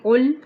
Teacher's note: قاف موٹا ہے، لام کو ہلائیں گے نہیں